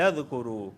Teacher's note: یہاں دیکھیں واو ساکن سے پہلے پیش آیا ہے، تو اس وجہ سے کرو کو میں کھینچ رہا ہوں